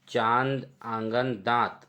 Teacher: इसके बाद आगे चलते हैं अनुनासिक, ऐसे स्वर जिसका उच्चारण नाक और मुंह दोनों से होता है तथा उच्चारण में लघुता रहती है